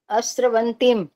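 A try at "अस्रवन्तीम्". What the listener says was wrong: अस्त्र नहीं था ना, अस्त्रवंतिम है। ये स्र है, स्त्र नहीं है।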